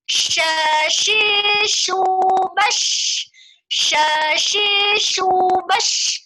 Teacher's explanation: Waktu menyebutkan bash, itu harus dia tafashi. Tafashi itu artinya menyebar gitu ya. Banyak angin yang keluar dari situ.